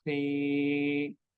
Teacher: Rule 1 second long because kha has long ya